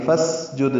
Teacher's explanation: فسجد میں فا اور اسجد ملا دیں گے، فسجد سین ساکن ہے، اس میں ہم سے باریک پڑی جائے گی، دال ساکن ہے، اس پہ قلقلہ ہے